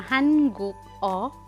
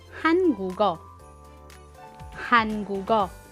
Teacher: Hangugo. Nagiging connected ang patchim na G sound plus O, kaya nagiging hangugo. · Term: connecting sound